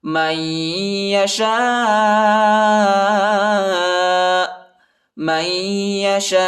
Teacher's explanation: شین کے بعد جو الف ہے اس کے اوپر جو ہے بڑا مد ہے، اس کو تقریباً 3-4 سیکنڈ تک کھینچیں گے اور ادھر جو ہے وقف کریں گے. · آخر میں جو ہے حمزہ کی آواز نکالیں گے